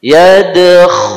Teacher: Huruf kha ada suara serak di sana.